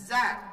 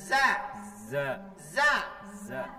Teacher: Kalau Za itu tengah lidah menyentuh langit-langit bahagian atas. Za. Tengah lidahnya. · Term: huruf Za